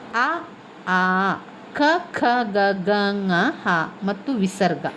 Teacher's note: ಈ ಅಕ್ಷರಗಳು ಕಂಠದಲ್ಲಿ ಹುಟ್ಟುವಾದ್ದರಿಂದ ಅದನ್ನು ನಾವು ಕಂಠ್ಯ ವರ್ಣಗಳು ಅಂತ ಹೇಳುವಂತದ್ದು